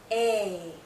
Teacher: this is a long vowel sound a our mouth is opening more our jaw is lowering a this sound is also tense so you might be seeing